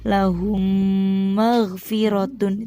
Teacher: Apabila mim sukun bertemu mim, cara membacanya dengung. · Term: idgham mimi